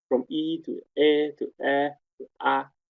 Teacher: when the tongue is lower, from E to E to E to A, then we have gradually higher F1, first formant. So open sounds have a high value of the first formant. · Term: opening the vocal tract